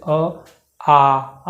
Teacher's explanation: और अगर पूरा खुलने की बात करेंगे तो आ जहाँ आएगा वहाँ पूरा खोलेगा, जैसे आ जब बोलेंगे तो पूरा मुंह खुल जाता है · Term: विवृत